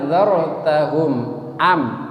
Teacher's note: Mim mati ketemu dengan alif. Izhar syafawi, mimnya tidak boleh dengung.